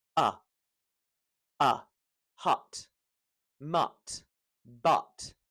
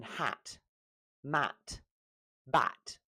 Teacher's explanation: If you lose the smile uh it becomes that short u sound